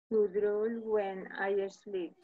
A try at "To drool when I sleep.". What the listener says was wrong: Perfect. Esa es la pronunciación.